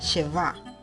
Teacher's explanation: el golpe de voz va en la última sílaba